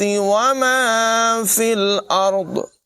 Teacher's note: را کو پر پڑھیں گے، ضاد کو بھی پر پڑھیں گے